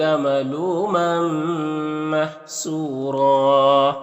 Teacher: یہاں پر ایک زبر کے ساتھ الف پڑھیں گے اور را کو پر پڑھیں گے